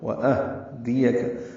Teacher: واو ہونٹوں کی نا تمام گلائی سے، حمزہ اقصی حلق سے اور ہاں بھی اقصی حلق سے، حمزہ بالجہر ادا ہوتا ہے، ہاں پہ ہمس ہوگا